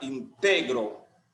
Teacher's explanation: Entonces la mayor fuerza o intensidad de esa palabra está en la penúltima sílaba. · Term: grave o llana